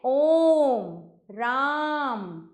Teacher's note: अब आते हैं हम प्लुत स्वर पर। इस स्वर के उच्चारण में दीर्घ स्वर से भी अधिक समय यानी तीन मात्राओं का समय लगता है